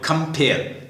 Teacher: कंपेयर दो इसमें दो हैं, कंपेयर, तो खम जो है उसके ऊपर अनस्ट्रेस लिख दें, फेयर दूसरा सिलेबल उसको स्ट्रेस करें, उस पर स्लैश खींच दें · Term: स्ट्रेस सिलेबल